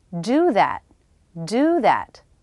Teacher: Do is fully pronounced. Do is the main verb